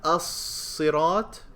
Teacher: Lam is not pronounced. That's how you know it's a solar letter.